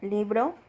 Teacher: la intensidad fonética está en la primera sílaba, es decir, en li